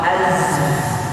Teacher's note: itu di mana tertepatnya ujung lidah dengan gigi seri bawah Az keluarnya di antara Gigi atas dan Gigi bawah